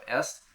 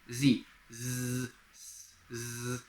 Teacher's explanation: With Z, you can feel the vibration. That's your vocal cords vibrating very rapidly.